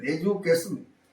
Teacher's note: So the stress falls on the third syllable.